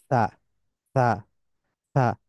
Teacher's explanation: এই তিনটাও জিহ্বার অংশ, জিহ্বার সাহায্যে উচ্চারিত হয়। জিহ্বার পিঠ উপরের দুই দাঁতের আগায় আলতোভাবে লেগে উচ্চারিত হবে। আগেরটাতে একটু শক্তভাবে লেগেছিল, আর এই তিনটার ক্ষেত্রে একটু হালকাভাবে লাগবে বা আলতোভাবে লাগবে। · Tip of the tongue lightly touches the edge of the upper front teeth. · Tip of the tongue lightly touches the এজ of the upper front teeth